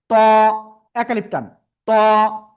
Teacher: মোটা আওয়াজে পড়তে হবে, জিহ্বার আগা উপরের দুই দাঁতের গোড়ায় লাগাবো, সামনের উপরের দুই দাঁতের গোড়ায় লাগিয়ে আমরা উচ্চারণ করব।